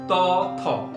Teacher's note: জিহ্বা ওপরের পাটির দাঁতের পেছনের নিচের অংশে লাগছে, স্পর্শ করছে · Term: দন্ত ধ্বনি